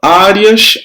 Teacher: O som do E é mais fraco do que o do A. Então, semivogal e vogal, eu acentuo a penúltima sílaba.